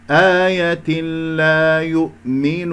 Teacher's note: الياء مضمومة نضم الشفتين فيها